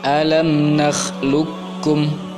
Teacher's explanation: Qaf sukun bertemu dengan huruf kaf, maka idgham kita masukkan, memasukkan qaf ke bacaan kaf. Jadi qafnya tidak lagi berbunyi, langsung masukkan ke huruf kaf. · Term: idgham mutaqaribain